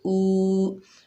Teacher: ये वाव मद्दा है, एक अलिफ की मिकदार खींच कर पढ़ेंगे।